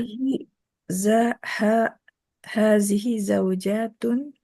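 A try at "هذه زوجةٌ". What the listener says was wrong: Hati-hati kalau yang masih pendek. Kalau yang masih pendek jangan jatun, jangan. Nah, jadi kalau sekedar ditekan saja, sekedar ada penekanan saja itu kayak dipanjangkan.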